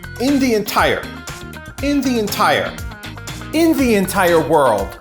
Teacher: We have a stress on the second syllable of entire